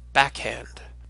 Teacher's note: the aspirated form of Kappa so it makes a sound with that followed by a sort of escape of breath